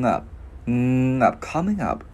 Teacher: Chữ ngờ cái mình ngân qua chữ up luôn.